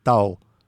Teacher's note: В удмурском языке три дифтонга: ау, уи, уа, которые встречаются в некоторых немногих словах. Дивтонг ау с неслоговым у на конце встречается только в слове тау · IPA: [au̯]